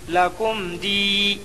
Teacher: لکم، کم میں اظہار شفوی ہوگا۔ میم ساکن کے بعد با اور میم کے علاوہ باقی 26 حرفوں میں سے دال آیا، اس لیے میم کو ظاہر کر کے پڑھنا چاہیے